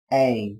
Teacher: Các bạn lưu ý từ này có chứa nguyên âm đôi A. Các bạn đọc âm E nối với âm I. Âm E đọc dài hơn âm I một chút là được nhé.